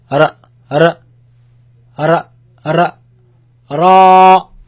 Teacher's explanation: it comes from the tip of the tongue touching the front palate roof